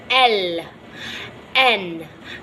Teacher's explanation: Tongue tip or blade touches the alveolar ridge.